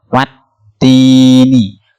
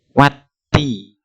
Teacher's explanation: Yang keempat, contoh wattini, bunyi wa langsung dihubungkan ke huruf ta, bertasdid dibaca watti